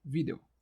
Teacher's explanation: A sílaba tônica é o vídeo, é vi, é paroxítono.